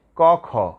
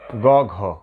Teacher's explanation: ক খতে কম কাঁপবে, গ ঘ উঁতে বেশি কাঁপবে। বেশি কাঁপলে ঘোষ, কম কাঁপলে অল্প কাঁপলে অঘোষ।